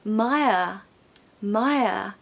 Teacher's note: So admire, admire. And of course no R pronunciation at the end.